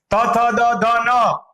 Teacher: છે ત થ દ ધ ન એ તાલવ્ય બતાવવામાં આવ્યા છે જીભ ઉપરના તાળવા ઉપર સ્પર્શ કરે તો જ ત થ દ ધ ન બોલી શકાય